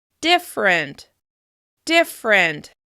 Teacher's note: The second /ər/ has completely disappeared and I flow right into that /r/ sound